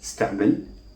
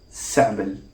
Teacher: If you hear this word in the course of a conversation, then you are less likely to hear stamil than to hear samil. T has completely disappeared as a result of total assimilation, swallowing the T, and making it an S.